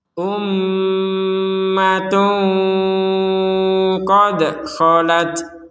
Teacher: Ada tanwin bertemu qaf, maka kita membacanya dengan samar.